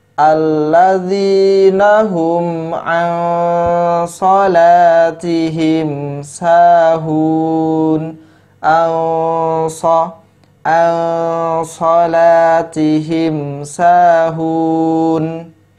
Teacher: nun sukun bertemu dengan huruf shad. Maka hukum bacaannya adalah ikhfa hakiki. Ya, dibaca samar-samar.